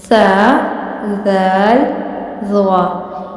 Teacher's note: انہیں آپ نے نرمی سے پڑھنا ہے. مثلاً اپنی زبان کو آپ نے آگے والے دانتوں کے درمیان میں رکھ کر پڑھنا ہے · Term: نرمی والے حروف